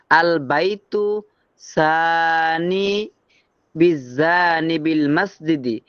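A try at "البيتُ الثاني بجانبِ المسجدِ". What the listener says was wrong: আল বাইতুস সানি, মিলাই বলতে হবে, আল বাইতুস সানি বিজানিবিল মসজিদি।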